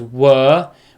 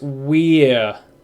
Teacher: Were is one sound, so it's were, whereas we're has more of a double vowel sound, so it's we're.